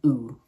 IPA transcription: u: